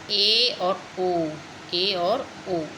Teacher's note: और इसका भी एक उपभेद बताया है, अर्धसंव्रत। अर्धसंव्रत मतलब थोड़ा आधा, थोड़ा होठ खुलते हैं